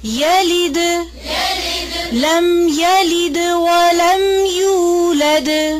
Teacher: یا کی زبر کو لمبا نہیں کھینچنا. یلد نہیں.